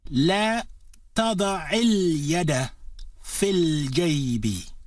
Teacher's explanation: the e sound of fi is shortened as it is slid together with the following word